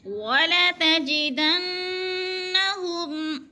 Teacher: نون مشدد ہے، ناک میں آواز لے جائیں گے، یعنی اخفا کریں گے